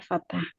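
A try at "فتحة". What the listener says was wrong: Ya, fathah ya, bukan fatah. Taknya tidak berharokat. Iya, taknya sukun fathah ya. Dengan fathah ya.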